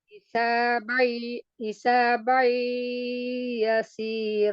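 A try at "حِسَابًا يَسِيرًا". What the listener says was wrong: masih dominan mulut ya ee harus dibagi dua Idghamunah ya.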